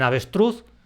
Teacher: en avestruz cargo esa fuerza en la sílaba truz, la última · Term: acento prosódico